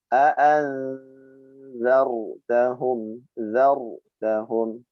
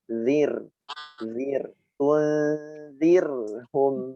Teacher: a'anzar zarnya dibaca tebal, sedangkan tunzir zir dibaca tipis.